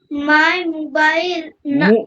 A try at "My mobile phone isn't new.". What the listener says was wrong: মোবাইল নয়, কথাটা হচ্ছে মোবাইল, মোবাইল, মোবাইল, মু নয়, মো। বলো, ঠিক করে বলো।